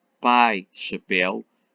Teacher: o ditongo decrescente pai chapéu tem primeiro uma vogal e depois uma semivogal · Pai, chapéu, tem primeiro uma vogal e depois uma semivogal. E crescente, que é ao contrário, primeiro a semivogal e depois a vogal.